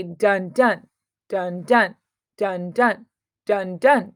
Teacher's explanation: the first syllable is soft and the second syllable is heavy to provide a backbeat behind your language. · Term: Iambic Pentameter